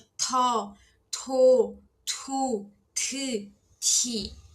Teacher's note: é o t aspirado, tá? Então não xia muito, é o t, então ele é mais forte